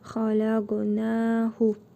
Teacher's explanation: Xaləqu bu hə zamiridir. Özündən əvvəl hərfi məd gəldiyinə görə qısa şəkildə oxuyuruq.